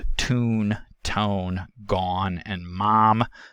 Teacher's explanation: the velum begins lowering early to open up the nasal passage while the vowel is still being produced before the nasal consonant starts this results in what is called a nasalized vowel and is